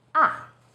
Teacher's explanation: starts High then Falls sharply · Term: fourth tone